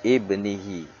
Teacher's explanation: Qolqolah Sugro itu pantulanya kecil